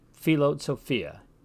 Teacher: we hear both the p and the H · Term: rough breathing